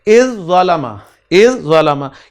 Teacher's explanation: یعنی طا کو ضا میں تبدیل کر کے مرج کر دیا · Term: قریب المخرج حروف